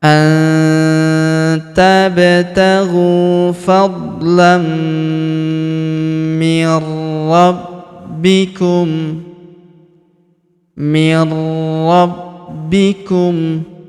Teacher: Huruf B kita tahan dan tekan karena terdapat tanda tasydid di atasnya.